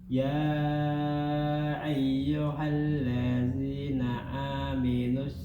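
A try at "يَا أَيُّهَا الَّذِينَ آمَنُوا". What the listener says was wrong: Manus. Bukan aminus, amanus.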